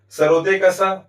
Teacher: सरोते का सा उच्चारण स्थान दंतमूल या मसूड़ा, इसलिए इसका वर्ग हो जाएगा वत्स।